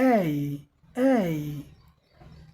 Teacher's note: front tongue up, front of tongue up and wide mouth